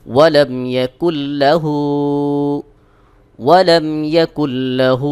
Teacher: আর ইয়াও মিম নুন থাকলে গুন্নাস সহ মিলায় পড়তে হয় তো এখানে লাম রয়েছে নুন সাকিনের পরে লাম ইদগামে বেগুন্নার হরফ সেহেতু এখানে আমরা গুন্না ছাড়া মিলিয়ে পড়বো